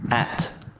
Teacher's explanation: At has a weak form and it's not stressed in this sentence. However, the last word of a sentence can't be weak. That means at gets its full pronunciation